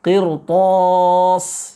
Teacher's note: kalimat qirtos itu ro-nya dibaca dengan tebal. Ya, padahal kalau menurut sejatinya ro-nya harus dibaca dengan tipis.